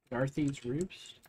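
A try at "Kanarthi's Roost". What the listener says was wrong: It starts with a K, but yeah, close enough. Canarthi, yeah.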